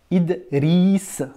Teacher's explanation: tu entends quoi d'autre tu entends le r roulés